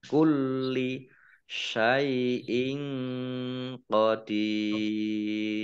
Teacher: Kulli lamnya dibaca double ada tasdidnya · Kasroh tanwin bertemu dengan huruf qaf bacaan ikhfa dibaca samar-samar. Dal kasroh ya sukun mat tobi'i tetapi karena bertemu dengan huruf terakhir yang dibaca sukun karena wakof maka menjadi mat arif lisukun.